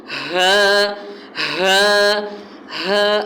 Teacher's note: ہا جو ہے وہ اقصی حلق یعنی حلق کا پچھلا جو حصہ ہے سینے کی طرف والا، اس سے ادا ہوگا، اور تھوڑی سی اس کی آواز جو ہے وہ بھاری ہوگی۔